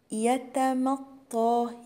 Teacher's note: حرف الميم مرقق وراه حرف الطاء مفخم